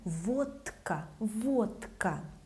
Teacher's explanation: the voiceless K makes letter D sound voiceless, like T.